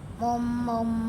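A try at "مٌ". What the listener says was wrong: kok jadi mum? Pakai un. Kan semuanya pakai un. Mun. Bukan mum ya, tapi mun.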